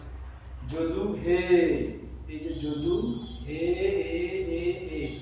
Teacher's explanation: প্লুতস্বরটা ব্যাপারটা কি? প্লুতস্বর হচ্ছে একটা টান দিয়ে দিয়ে উচ্চারণ করা। টান দিয়ে দিয়ে উচ্চারণ করি।